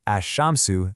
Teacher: But if it's a sun letter, like in the word for sun, ashamsu, the L goes silent, and you basically just double the sha sound instead